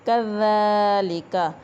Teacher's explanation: ذال کے اوپر کھڑی زبر، اس کو ایک الف کے برابر لمبا کریں گے اور نرمی سے اس کو ادا کیا جائے گا۔